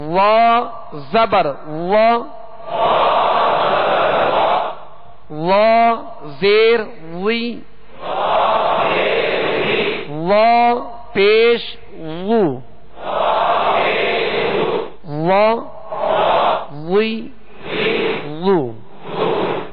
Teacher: اس کو پر پڑھیں گے اور پیش زیر میں ہونٹ گول نہیں کریں گے